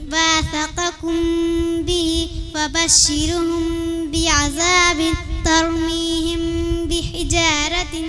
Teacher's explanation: मीम साकिन के बाद बा आए तो गुन्ना के साथ इख्फा होगा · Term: इख्फा शफी